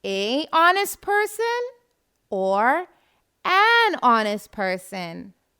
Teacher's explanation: honest starts with the letter h but the first sound of the word is that of the vowel o